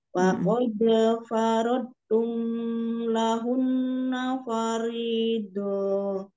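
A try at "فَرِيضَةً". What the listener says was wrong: Faridoh jangan dipanjangin, kemudian mim ketemu lam itu langsung aja Omnya jangan digunakan. Wa qad faradtum lahunna faridah. doh. Dohnya tapi jangan memanjang. Faridah. Gitu langsung. Iya, faridoh ada tobiinya. Lahun nafaridoh.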